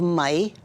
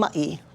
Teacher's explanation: That little glottal stop is a break in your voice